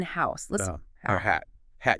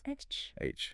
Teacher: Feel the air. And notice it's voiceless. Your vocal cords aren't buzzing or anything. Just air. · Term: H sound